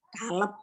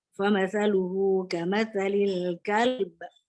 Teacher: sifat qalqalahnya ba juga harus ada